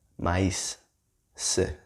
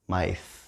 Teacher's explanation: the S sound instead of the th sound, right? Both are fine. In my accent is maíz, but in several accents, especially in Central America and South America, it would be maíz, right?